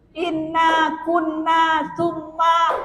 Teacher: Inna itu namanya wajibul gunnah, wajib berdengung.